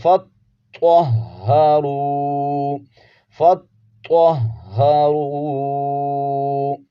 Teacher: تو کو موٹا کر کے پڑھیں گے، تو اور ہا کو جماؤ کے ساتھ ادا کریں گے۔